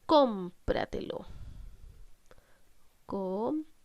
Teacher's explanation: ¿Dónde estamos cargando la voz? En com. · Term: palabra sobresdrújula